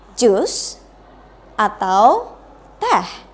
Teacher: Ketika Anda pengen menyatakan pertanyaan atau sebuah pilihan yang pertama, jus, berarti harus menggunakan raising intonation, menggunakan intonasinya naik. Tapi kalau mau bilang teh, untuk pilihan terakhirnya berarti using drop intonation, berarti intonasinya harus turun.